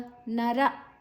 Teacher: ನರ ಆದ ನಂತರ ವಿಸರ್ಗದ ಉಚ್ಚಾರಣೆ ಹ